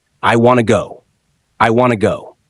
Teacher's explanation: Want to becomes wanna in natural speech